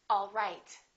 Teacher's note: my pitch goes down at the end for a statement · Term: falling intonation